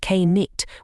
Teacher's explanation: it was once pronounced K nit with that hard k sound but as the language softened the K quietly disappeared but why